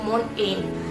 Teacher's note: Tapi sebenarnya itu seharusnya T-nya itu hilang ya, tidak terlalu jelas dibacakan menjadi mountain.